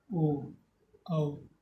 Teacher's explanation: हमारा होंठ भी अपनी आकृति बदल रहा है और कंठ से आवाज़ निकल रही है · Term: कंठोष्ठ